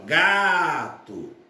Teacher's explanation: gato, sílaba tônica, ga, portanto, então se trata de uma palavra paroxítona